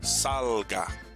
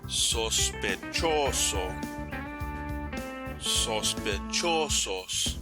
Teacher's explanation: the second to the last syllable of the word gets the emphasis or the stress. This means that it gets a slight upward inflection of the voice and usually a subtle increase in volume too.